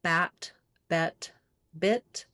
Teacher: going from the more open to the more closed like bat b bet bit · we need to have three placements there, with the I being the highest and the A being the most open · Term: lax front vowels, lax vowels